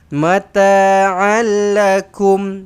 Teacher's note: matikan mim mati di sini, izhar syafawi jelas dan terang